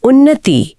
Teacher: यहाँ आधा न और पूरा न मिलकर एक द्वित्व व्यंजन बनाते हैं। · जी, और एक और बहुत ही आम उदाहरण है उत प्लस नति। यहाँ त के बाद न आया जो खुद एक अनुनासिक है, तो त भी संगति में आकर अपने वर्ग के 5वें अक्षर न में बदल गया। हाँ, और शब्द बना उन्नति।